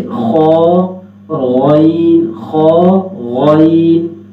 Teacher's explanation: آگے ہے خا، خا چونکہ موٹے حروف میں سے ہے، جی گلے کے آپ 3 حصے بنائیں، یہ اوپر والا حصہ، یہ درمیان والا حصہ، یہ نیچے والا، 1 2 3 حصے بنائیں گے۔ جو حصہ گلے کی طرف ہے، منہ کی طرف ہے، وہاں سے خا اور غائن، خا غائن، یہ 2 حروف ادا ہوتے ہیں، تو یہاں سے خا ادا ہوگا۔